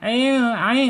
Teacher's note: Ain ini ada di tenggorokan tengah ketika kita ucapkan ya.